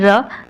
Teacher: और लुंठित ध्वनि क्यों कहते हैं, क्योंकि ये तालु से लुढ़क कर, जीभ से लुढ़क कर तालु से भी स्पर्श कर जाता है, इसलिए इसे लुंठित ध्वनि कहते हैं।